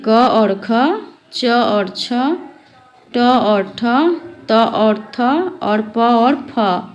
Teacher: प्रत्येक वर्ग में पहले दो वर्ण अघोष होते हैं।